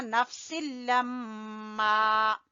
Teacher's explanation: میم مشدد کا غنہ کرتے ہوئے الف مدہ کو کھینچیں گے